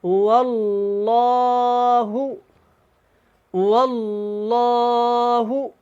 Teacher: یہاں پہ لام اللہ والا ہے، اس سے پہلے زبر ہے تو یہ موٹا پڑھیں گے